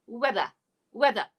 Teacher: we're using british english everybody so we don't say the r sound at the end it's only uh uh so it's weather say again weather weather